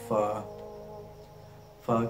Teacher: की नोक जब नीचे वाले होठ के दरमियान आ जाए फा ऊपर वाले दो दांत नीचे वाले होठ में लग रहे है तो फा अदा होता है